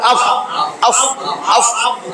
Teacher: নিচের ঠোঁটের পেট দেখেন কি হয়, নিচের ঠোঁটের পেট উপরের দাঁতের গোড়ায় আগায় যায় লাগতেছে